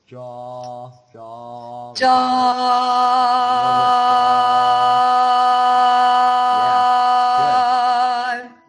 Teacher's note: It's basically an ah, like awesome, but it's a horizontal ah.